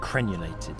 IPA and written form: ˈkren.əl.eɪ.tɪd (Crenellated)